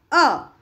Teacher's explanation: अ बोलने के लिए न मेरे लिप्स हिले, न कहीं से न दांत को दांत टकराए, न मेरे जो टंग है वो ऊपर में हमारे जो मुंह के ऊपर का पोर्शन होता है उसमें भी नहीं लगी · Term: स्वर